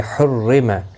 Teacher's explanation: را زیر کی وجہ سے باریک پڑھا جائے گا